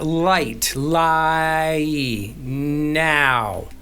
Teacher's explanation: your voice moves from one vowel shape to another. So within that one syllable. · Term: gliding vowel